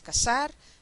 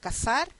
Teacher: en la s la lengua está tocando la región alveolar en la z ponemos la lengua entre los dientes